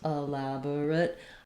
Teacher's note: I need to be very quick on this middle schwa. I can go all the way to dropping it out and it won't affect the pronunciation.